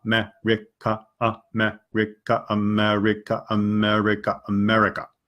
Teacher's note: And I'm not thinking of a word right now, but I would break it down into little pieces. There's 4 syllables, America. And each of them are pretty flat. So I would start slow and then push them together faster and faster.